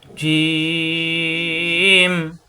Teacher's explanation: জিম, জিব্বার মাঝখানে উপরে তালুতে চাপ দিয়ে, জিম। হরকত আসলে তাড়াতাড়ি।